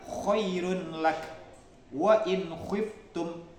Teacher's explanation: ghin dan kha ini keluar dari tenggorokan atas.